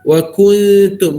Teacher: Kaifa takfuruna billahi wa nampak saya baca wa kuntum, sebab saya baca wa kun sebab nun mati dengan ta. Nun mati dengan ta hukumnya ikhfa haqiqi, tapi bunyi dengung itu kena nipis sikit sebab huruf ta tu nipis.